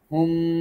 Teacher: হুম, হুমের পরে মিম সাকিন, এর পরে বা আসছে, গুন্না আছে, যথারীতি আমরা এখানে মিম সাকিনের গুন্না করব। হুম, মিম সাকিনকে গোপন করে আমরা এখানে গুন্না করব